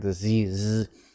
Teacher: voiced sounds like diseases which are produced by vibration of the vocal cords down here in the throat